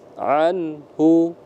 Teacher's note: nun mati bertemu dengan ha Anhu itu izhar jadi dibaca Dibaca jelas Anhu dibaca jelas yufaqu Anhu Man U juga dibaca izhar izhar